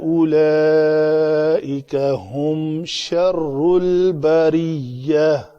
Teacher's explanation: یہاں تا کو ہائے ساکنہ بنا کر پڑھا جائے گا